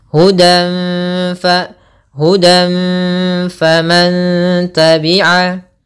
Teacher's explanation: Samarkan suara nun, tanwinnya kepada fa. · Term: ikhfa hakiki